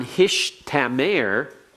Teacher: in the Hebrew they do not like having a Tau before a Sheen to them that does not sound right so they reverse the two